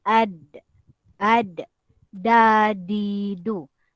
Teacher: ujung lidah ujung lidah ditekan ke gusi bahagian atas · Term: huruf Day